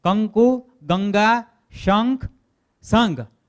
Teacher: તો જેમાં ક, ખ, ગ, ઘ એ પછીના શબ્દમાં આવતું હોય તો એનો ઉચ્ચારણ અંગ જેવું થાય. દાખલા તરીકે કંકુ, તો ન ત્યાં ઉચ્ચાર ન થાય, અંગ એવો ઉચ્ચારણ થાય. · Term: અનુનાસિક